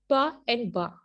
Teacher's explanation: जो लिप्स आपस में टच करने पे प्रोड्यूस होते हैं